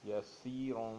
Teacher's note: سین سخت اور پتلی پڑھی جائے گی